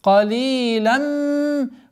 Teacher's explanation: Полноценная ассимиляция с полноценной назализацией в размере двух огласовок удерживаем, после которой у нас долгота в размере двух огласовок фатха над буквой мим.